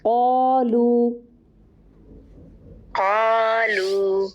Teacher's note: قالو کو موٹا کیجیے، الف بھی موٹا ہوگا کیونکہ الف ما قبل کے تابع ہوتا ہے. اگر اس سے پہلے موٹا حرف ہے تو الف بھی موٹا ہو جائے گا.